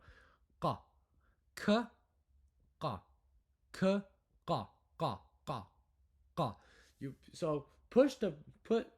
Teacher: it's a K sound, but you make it on the back of your throat. So you're literally clicking your throat. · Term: qaf